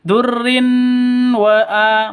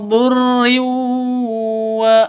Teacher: tanwin bertemu dengan wawu. Cara bacanya masuk ke wawu. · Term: idgham bigunnah